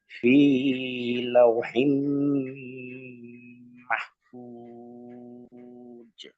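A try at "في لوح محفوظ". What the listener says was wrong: একটা জায়গায় একটু মিস্টেক হয়ে গেছে, একালিফটা কিন্তু একালিফের বেশি পরিমাণ কখনো যাতে না যায়, তাহলে ফি বেশি টান হয়ে গেছে, তাহলে ফি লাউহিম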